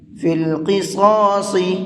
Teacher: شروع میں قاف ہے اور اس کے بعد میں 2 صاد ہیں، ان تینوں حرفوں کو پر کر کے پڑھیں گے۔